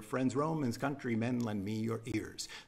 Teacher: the rhythm alternates stressed syllables and unstressed syllables. So they go de-dum. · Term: iambic pentameter